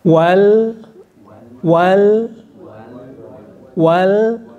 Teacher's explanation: lam itu termasuk huruf ujung lidah membunyikannya ringan